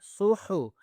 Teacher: کو موٹا کرنا ہے، ٹھیک ہے، صح، ہے کو پراپرلی گلے کے اوپر والی حصے سے آواز نکالنی ہے